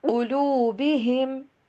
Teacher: ہم کے اوپر غنہ نہیں کرنا